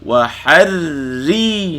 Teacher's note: Ra tu bagi bawah, baca nipis.